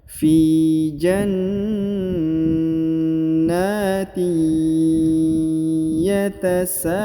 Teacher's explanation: harokat tanwin bertemu dengan ya bertasdid. Ya, kaidahnya ditahan, ditekan, didengungkan, dan huruf tanwinnya harokat innya melebur dan menghilang ke huruf ya.